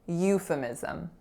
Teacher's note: The second syllable is f, so f schwa. Then the third syllable is mi, with a lax I. And then our final syllable is z schwa m, zum, euphemism.